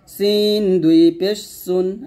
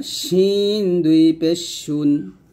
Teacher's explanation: সিন বলার সময় জিহ্বাটা নিচে দাঁতে লাগবে, আর শিনটা বলার সময় জিহ্বার মধ্যখান তার বরাবর উপরে তালুর সঙ্গে লাগবে